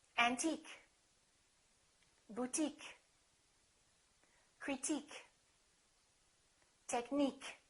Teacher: we stress the suffix